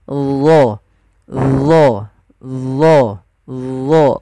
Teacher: yang membedakan adalah sifat huruf daripada huruf dho itu yang dia tebal, yaitu itbaq dengan isti'la.